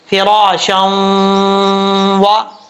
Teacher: دو زبر کی تنوین کے بعد واو آ رہا ہے، اور یہاں پہ ادغام یرملون ہوگا غنہ کے ساتھ، ایک الف کی مقدار غنہ کیا جائے گا